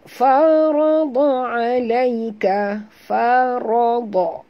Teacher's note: ra dengan dad ni tebal, fa tidak ya.